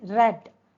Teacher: While you are pronouncing the um sound R in red, uh the blade and tip of the tongue is a little bit rolled. Okay, that is why it is known as uh trill. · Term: Rolled R